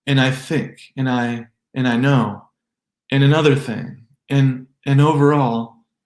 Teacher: We often pronounce the word and without the D, even when followed by a vowel sound. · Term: optional D